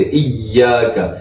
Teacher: ایاک نعبد، یا پہ تشدید ہے مضبوطی سے